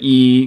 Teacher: could be described as a high front unrounded vowel